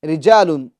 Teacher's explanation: یہ را کو ہم باریک پڑھیں گے یعنی موٹا نہیں پڑھیں گے، کیونکہ را کے نیچے زیر ہے، اور قاعدہ ہے را کے نیچے زیر ہو تو را کو باریک پڑھتے ہیں یعنی موٹا نہیں پڑھتے ہیں، پور نہیں کرتے ہیں.